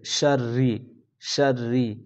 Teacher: را کو باریک کریں گے کیونکہ را کے نیچے زیر ہے